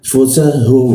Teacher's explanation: Fusahum, fusahum, masuk ke ha, tebal di tenggorokan bagian bawah